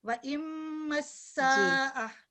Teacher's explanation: سین میں سیٹی کی آواز جیسے آتی ہے، وَإِمَّسَّا، ٹھیک ہے، یہ سو نہیں ہے.